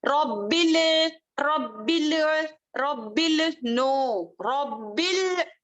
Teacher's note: لام کو جب پڑھتے ہیں تو ہلانا نہیں ہے کیونکہ وہ خلقلے کا لیٹر نہیں ہے